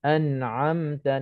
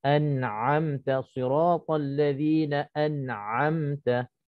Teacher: nak kena jelaskan nun mati ataupun tanwin tanpa dengung. Contohnya an'amta, nun mati bertemu dengan ain. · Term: izhar